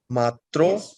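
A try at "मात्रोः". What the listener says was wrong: Matroho. The hakara should be heard. The visarga at the end should be heard. Matroho.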